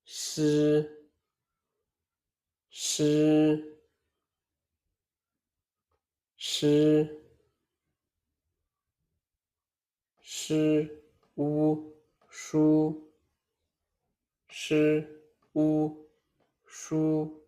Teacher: Sh is also a retroflex sound. Tongue is slightly curled back. Air flows through a narrow space. Sound is smooth and continuous.